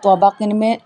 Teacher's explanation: قاف کو بھی موٹا پڑا جائے گا، منہ بھر کے پڑا جائے گا، زبان کی جڑ تالو کے نرم حصے سے ادا ہوگا، ٹھیک ہے۔ طوابقن میں طوا اور قاف دونوں موٹے ہیں۔